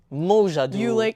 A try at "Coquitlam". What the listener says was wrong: You put like an emphasis on the Q and the la.